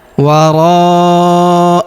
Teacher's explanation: Huruf ro kita panjangkan empat atau lima harakat karena di depan huruf ro terdapat alif. yang di atasnya terdapat tanda garis bacaan panjang empat atau lima harakat yang ini ya.